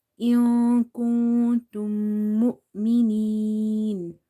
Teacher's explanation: So here you have to hide the sound of nun sakin. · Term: ikhfa